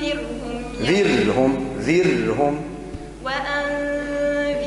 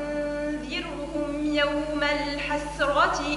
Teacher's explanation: وأنذرهم فيها ترقيق لكن الحسرة مفخمة